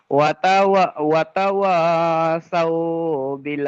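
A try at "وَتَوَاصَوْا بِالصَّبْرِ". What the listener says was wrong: সৌ বিল হবে না, সৌ বিস, বাটা সদের সঙ্গে মিলাইতে হবে, সৌ বিস সবর, সবর।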